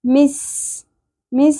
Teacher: سین کو باریکی سے ادا کرتے ہوئے سیٹی کی آواز آنی چاہیے